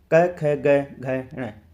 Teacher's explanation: पहला वर्ग है क वर्ग। जो क वर्ग होता है उसका उच्चारण स्थान कौन सा होता है? कंठ।